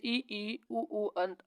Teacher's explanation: संवृत जिन स्वरों के उच्चारण में मुख द्वार लगभग बंद रहता है